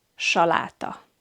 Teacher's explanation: So in English it has the S sound, but in Hungarian it has the sh sound, like in the English word ship.